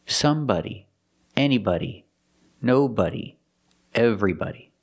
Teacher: have somebody anybody nobody everybody we spell them like body but we pronounce them like buddy with a short sound using the short uh like up and cup